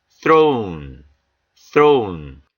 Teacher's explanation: th 사운드는 요 th는 무성음입니다. 그래서 바람 소리가 나가죠. 윗니와 아랫니로 혀끝을 살짝 무시면서 throne, throne, 무성음입니다.